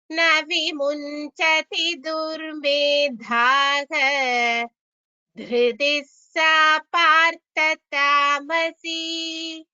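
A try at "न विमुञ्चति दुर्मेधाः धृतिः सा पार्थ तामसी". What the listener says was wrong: Bhagini, it would be better if your durmedhaha, du is shorter than what you're chanting, so that be clear that it is a hrasva, that is a short letter and not a long letter.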